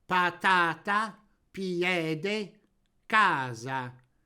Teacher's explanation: Parola piana, in cui l'accento tonico cade sulla penultima vocale.